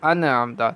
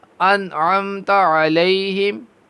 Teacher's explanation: نون حرف قلقلہ میں سے تو نہیں ہے، تو اس کو بالکل نرمی سے ہم پڑھیں گے